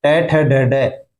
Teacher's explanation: जीभ मुर्दा को स्पर्श करती है तो कौन से वर्ण बोले जाते हैं? ट ठ ड ढ मूर्धन्य ध्वनियां हैं।